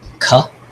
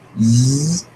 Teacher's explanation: with the s or with the ka, there's no vibration, and with the z or the ga, you'll feel the vibration there. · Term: voiceless versus voiced